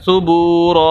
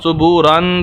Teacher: زبر آ جائیں یا 2 زیر 2 پیش آ جائیں تو اس کو جو وقف کرنے کا طریقہ ہے وہ یہ ہے کہ ایک زبر کو پڑھا جائے گا اور الف کو پڑھا جائے گا